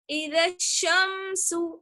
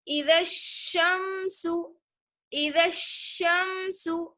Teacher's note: حروف شمسی میں الف اور لام کو ظاہر نہیں کرنا ہوتا ہے، پڑھنا نہیں ہوتا ہے۔